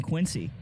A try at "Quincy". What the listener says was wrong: But you're saying everyone there says Quincy with like a Z. It's Quincy.